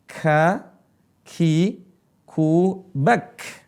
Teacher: Perhatikan huruf kaf ada desisnya.